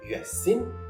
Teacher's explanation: I verbi che iniziano in y, consonante approssimante palatale, seguita da vocale, sostituiscono la y con che e raddoppiano in ye.